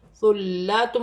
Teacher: ثا نرمی والا حرف ہے، سٹی نہ ہو